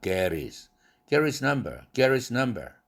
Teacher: Get his number 할 때에도 H 날라갔죠? 그럼 T가 링크됨과 동시에 그 T는 모음과 모음 사이에 끼게 되었으니까 플랩 사운드 되죠. 그래서 get his가 아니라 get his.